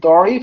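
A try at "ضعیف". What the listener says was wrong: এইখানে আপনি জাইফ বলবেন, জাইফ, এখানে দ বলার দরকার নেই, জাইফ, দয়ীফ বলার দরকার নেই, ঠিক আছে। একটা জিনিস আপনাকে কিভাবে বুঝাবো আমি, এই যে আমাদের ভারতীয় উপমহাদেশে এই দরটাকে আপনার জ দিয়ে উচ্চারণ করে অধিকাংশ আলেমরা।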